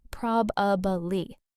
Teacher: The stress is in the wrong place. The correct pronunciation is prob-a-bly, stress on the first syllable. And in fast, casual speech, native speakers often compress it even more to just probably, two syllables.